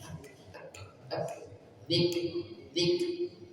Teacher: ada kaf sukun maka tidak dipantulkan lik enggak, tapi lik lik ada desisnya lik lik gitu ya, zikrillah.